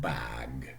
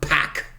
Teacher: Bag, the two consonants voiced, and in pack, the two consonants voiceless.